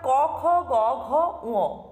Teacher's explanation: জিউহার পশ্চাৎ ভাগ যেন কণ্ঠকে স্পর্শ করতে চায় এগুলি কন্ঠে উচ্চারিত হচ্ছে এই পাঁচটি ব্যঞ্জন ধ্বনি তাই এই পাঁচটি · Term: কণ্ঠ ব্যঞ্জন